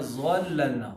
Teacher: ظا موٹا تو ہوگا لیکن بھاری نہیں ہوگا ضاد کی طرح